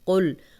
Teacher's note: قاف کو موٹا پڑھیں گے، اس کو باریک کاف، کل نہیں پڑھیں گے